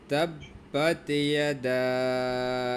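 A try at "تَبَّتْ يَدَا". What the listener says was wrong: তাব তাব, এই এর শক্ত করা যাবে না তো, একটু বাতাস বের হবে। তাব্বাত, তাব্বাত ইয়াদা। বাত, এটা তো তোর মতো হচ্ছে, শক্ত করা যাবে না তো। বাত,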